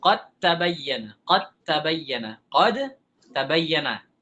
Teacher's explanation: Kita idghamkan qad tabayyana. Dal sudah menjadi ta. Jangan kita baca dal lagi. Jangan kita baca qad tabayyana.